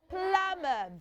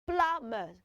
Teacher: the thing is you don't pronounce the b sound in that word